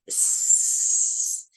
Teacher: I put my tongue right behind my teeth a little bit, not touching my teeth, and against the ridge, that little bump behind your front teeth, not the roof of the mouth, which is flatter up here, but that little bump that just connects with the teeth.